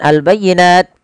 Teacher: albayyinat panjang nanya dua harakat karena ia mad thabii ditandai dengan fathah bertemu alif kecil